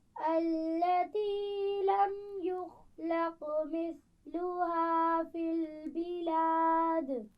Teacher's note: یخلق، خا اور قاف دونوں موٹے پڑے جاتے ہیں اور قاف پر قلقلہ بھی ہو رہا ہے.